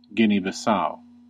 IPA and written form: ˈɡɪni bɪˈsaʊ (Guinea-Bissau)